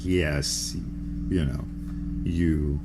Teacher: there's a kind of a lateral semivowel pushing the tongue down to create the yeah sound, you know, where there is the mouth is opening up, the sort of that yawning, but whether there is a flexion of the tongue going down to produce the yeah, as in yes, you know, you, and so on. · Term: semivowels